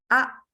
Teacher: Jadi pita suaranya langsung menutup. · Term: hamzah